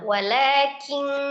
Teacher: Jadi, bunyinya mendekati eng, disertai dengan ghunna. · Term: ikhfa haqiqi